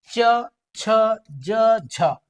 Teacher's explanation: ये संघर्ष भी कर रहा है और स्पर्श भी कर रहा है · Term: स्पर्श संघर्षी व्यंजन